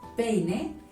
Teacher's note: Peine termina en vocal y tiene el golpe de voz en la penúltima sílaba. Como es así, no tiene tilde.